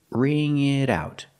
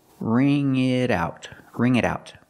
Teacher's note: The T in it changes to a fast D because it's between vowels.